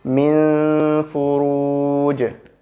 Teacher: Whenever we stop there, we will convert the double kasra into sukoon, and the jim comes with sukoon, it will give echo sound.